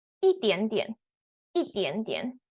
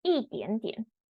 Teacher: Fourth tone, actually second tone, and then third tone.